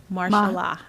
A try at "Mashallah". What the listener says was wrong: I thought it was mashallah. Mashallah. No R.